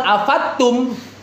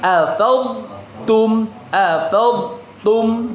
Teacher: Jadi bukan afattum ya, huruf dod itu terlalu kuat untuk huruf ta gitu. Dia enggak dod itu enggak melebur ke ta. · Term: tidak diidgamkan